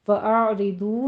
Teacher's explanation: फ़अरिदू में रा मुरक़्क़क़ पढ़ी जाएगी, बारीक इसको पढ़ते हुए आगे दौत को पूर पढ़ना है और वाव मद्दा अदा करने हैं, दोनों होंठों को गोल करते हुए।